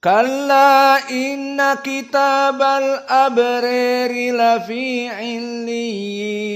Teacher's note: al-imalah al-kubra al-abrar menjadi al-abrir